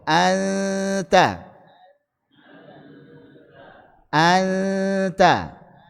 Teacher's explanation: ucapkan ghunah secara sempurna dengan tempo yang dipanjangkan. Jadi ghunah mutawwalah.